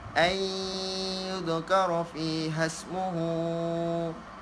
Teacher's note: Memasukkan dengan dengung maksudnya memasukkan ya yang selepas nun mati tu, memasukkan sehingga menghilangkan nun mati dengan dengung. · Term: idgham ma'al ghunnah